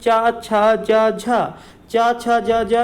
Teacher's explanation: चा वर्ग किससे बोला जाता है बेटा, तालु से बोला जाता है